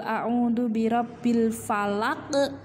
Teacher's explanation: ada huruf qaf yang harus di pantulkan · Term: Qalqalah